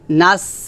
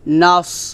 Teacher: নুন সোয়াদ যাব নস, নস, নাস, এটা হবে না, হবে নস, মোটা করতে হবে